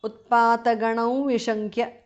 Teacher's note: Because of sandhi, anuswara changes to the nasal of va.